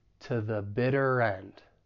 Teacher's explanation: the weak to is going to sound like t